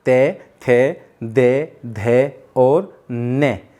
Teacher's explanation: लेकिन जैसे ही हम दंते वाले का उच्चारण करते हैं तो आप ध्यान से देखिए, बोली साथ साथ, ते, थे, दे, धे और ने, इनका उच्चारण करते समय हमारी जीभ हमारे दांतों को टच करती है